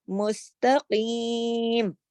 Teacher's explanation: صراط مستقیم, قاف موٹا اور یا مدہ کے ساتھ پڑھا جائے گا. اس کو جلدی سے مستقیم نہیں کر دینا, مستقیم.